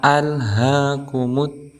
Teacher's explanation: di al ini bukan termasuk huruf qalqalah, maka jangan sampai ada bunyi pantulan seperti al, tetapi kita tahan alhaakumut. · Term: al-qamariyah